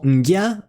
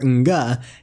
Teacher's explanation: The combination NG is pronounced either as a palatal ngya or as a velar nga, depending on its contact with the forward I, E, Y, or ash, or the back A, O, or U.